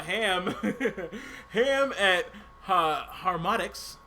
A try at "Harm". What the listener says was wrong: You call him Ham. It's harm. No. It's HARM. You said ham.